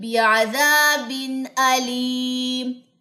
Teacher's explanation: تنوین کے بعد حمزہ، یہاں پہ غنہ نہیں کرنا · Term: اظہار